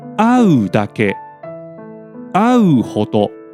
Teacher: au is a nucleus-bearing verb that ends on a low pitch. So, both moras of these two are pronounced low.